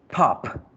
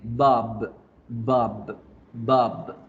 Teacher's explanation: el ejercicio de explotar con la p y vibrar con la b